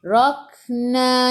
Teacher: kaf sifat hurufnya hamas kena ada sedikit saja angin. Rak kaf ada sukun masuk dalam kaf.